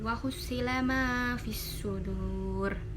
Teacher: As-sudu itu termasuk idgham syamsiah karena di sini ada alif lam bertemu huruf idgham syamsiah yaitu shad, kemudian dibacanya memasukkan.